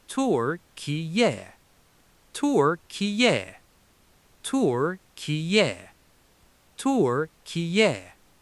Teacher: Third syllable, shouting out a relaxed, casual agreement sound, a yeah. Snap them together fast with the main stress at the very front.